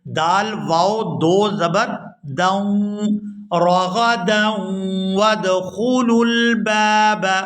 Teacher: یہاں دال کو واو مشدد کے ساتھ ملائیں گے تو غنہ کریں گے